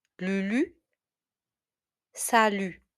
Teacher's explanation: You notice that I don't say the t at the end.